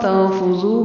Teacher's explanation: تنفذو میں نون پر اخفا ہوگا، تا میں بھی تن پر اخفا ہوگا نون پہ